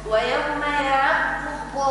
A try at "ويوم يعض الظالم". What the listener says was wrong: فخم الضاد يعض الظا